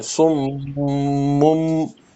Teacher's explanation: دیکھو میم بھی مشدد ہے، اس میں بھی غنہ کرنا ہے